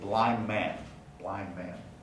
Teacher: man the d of blind gets deleted blind man in fact blind man then places the nasal n before the bilabial m which then triggers place assimilation